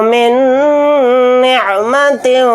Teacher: نون کے اوپر تشدید ہے تو نون کے اندر غنہ کر کے پڑھیں گے